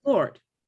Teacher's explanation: It's just one single pure O.